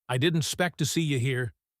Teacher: The expect to becomes spect.